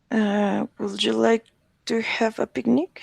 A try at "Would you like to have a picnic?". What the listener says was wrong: Would you like to have a picnic? Now the L in wood is silent, so it's not wold, it's wood. Would you like to have a picnic?